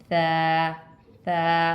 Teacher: सा के लिए हमने अपनी ज़बान को अपने सामने के दांतों की नोक से टच करना है, यानी कि अपने सामने वाले दांतों के किनारे पे टच करेंगे नरमी के साथ, तो हमारी सा की आवाज़ निकलेगी। जैसे कि सा सा, सीटी नहीं निकालनी है।